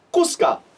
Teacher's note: the actual word kus is glottalized, but since this is a multi-syllable word, we aren't saying it as strongly, so I've actually taken it out here.